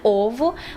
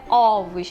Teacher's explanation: a palavra ovo, primeira letra O fica fechada, né? Ovo, mas quando estiver no plural é ovos, né? Fica aberta.